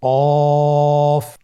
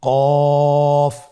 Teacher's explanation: আবার বলুন কফ কফের মাখরাজ স্ক্রিনে লক্ষ্য করুন এখানে আমরা মাখরাজের বা উচ্চারণের স্থান দেখতে পাচ্ছি কফের মাখরাজ হলো জিহ্বার গোড়া তার বরাবর উপরে তালুর সঙ্গে লাগিয়ে উচ্চারিত হয়